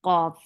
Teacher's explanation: Qaf is heavy. Qaf, and it has qalqala.